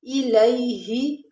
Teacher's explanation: یا ساکن اس سے پہلے زبر یا لین ہے، اس کو ہم نے نرمی اور جلدی کے ساتھ پڑھنا ہے۔